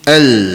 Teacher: Al tu dia tak dengung ya. Dia terus bunyi al. Dia tak bunyi nun tanpa didengungkan. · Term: idgham bila gunnah